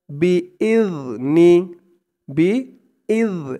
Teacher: জালের উচ্চারণটা একদম নরম পাতলা হবে জিহ্বার মাথা উপরের দাঁতের মাথার সাথে লাগবে জালের উচ্চারণটা করার সময়